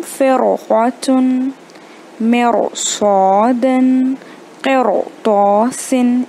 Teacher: रॉ साकिन के बाद क़ाफ है जो तफ़ख़ीम लेटर है, इसलिए हम फ़िरक़तुन, मिरसादन, क़िरतासिन, इस तरह मुंह भर भर के पढ़ रहे हैं। इसके बाद ये तो नंबर 1 हो गया एक्सेप्शन, कि रॉ के पहले अगर कसरा रहे या कुछ भी रहे फिर भी हमें उसे मोटा ही पढ़ना है।